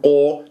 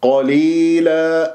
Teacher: قا قا مفخم مرتبة ثانية مفتوح ، قليلة، لا تقول قو، لا قا قليلة، ياء ساكنة قبلها